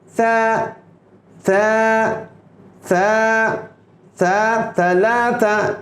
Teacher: اور عرب ثا کو تا تھا کہہ کے بھی پڑھتے ہیں اور عرب کا یہ پڑھنا بھی درست ہے، لیکن صحیح تلفظ یہ ہے زبان کی نوک اوپر کے دانتوں کے کنارے پر لگتی ہیں اور زبان کا تھوڑا حصہ باہر نکلا ہوتا ہے اور ہلکے سے ہوا کے پھونک کے ذریعے آپ اس حرف کو ادا کرتے ہیں، جیسے ثا ثا ثا ثا ثلاثہ.